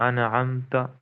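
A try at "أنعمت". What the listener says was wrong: हाँ, हिलाना नहीं है। अनअमत, अनअमत अक्सर लोग पढ़ते हैं इस तरह, ये बड़ी कॉमन गलती है, ठीक है।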